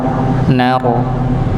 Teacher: yang diangkat bukan hanya sekedar ujung dari lidah tapi pangkal lidahnya juga di diangkat untuk menebalkan huruf ro